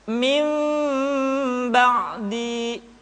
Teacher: Kemudian diucapkan mim dengan cara yang samar. Caranya, ketika mengucapkan huruf mim, kedua bibir kita agak sedikit direnggangkan, tidak sempurna rapat. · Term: iqlab